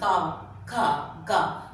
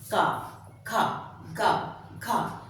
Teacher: अब जैसे हम क वर्ग के व्यंजन बोलते हैं। क ख ग तो जीभ का जो पिछला हिस्सा है पिछला भाग जो है वो क्या करता है? कंठ का स्पर्श करता है।